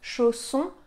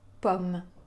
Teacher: [o], fermé, [ɔ], ouvert